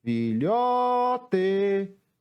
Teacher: Qual foi a sílaba que eu mais demorei pronunciando? Foi a sílaba lhó. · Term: sílaba tônica